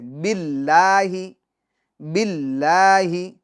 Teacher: اب باللہ میں جو لفظ اللہ کا لام ہے اس کو باریک پڑھیں گے